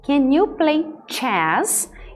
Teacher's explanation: Eu estou crescendo a entonação no final. Estou fazendo uma pergunta de yes, no question, então ele está crescente no final. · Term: entonação crescente